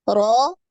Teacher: Ro ini tebal, naik ya, pangkal lidah.